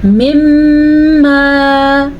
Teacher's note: میم کے اوپر جب شد آ جائے تو اس شد پہ غنہ ہو جاتا ہے۔ ایسا تب ہوتا ہے جب میم کے اوپر شد آ جائے یا جب نون کے اوپر شد آ جائے۔